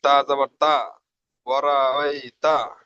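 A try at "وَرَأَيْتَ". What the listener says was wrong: তা জাবার তা নয়, তা গিয়ে যুক্ত হবে কার সাথে? তাসদিদ আছে না, তাসদিদ ওয়ালা অক্ষরকে দুবার পড়তে হয়, একবার ডান দিকের সাথে, একবার নিজে নিজে।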